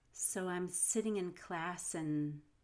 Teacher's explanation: i still want to link class to and and it'll sound like classen as i reduce ands to n